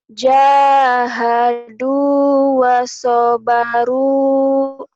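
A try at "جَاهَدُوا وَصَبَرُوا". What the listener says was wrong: Bener, tapi lagunya nggak jelas itu. Jahadu wasobaru gitu tuh. Jahadu wasobaru.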